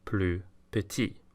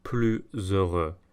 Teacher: with comparisons, the S is silent before a consonant, regardless of the meaning of the word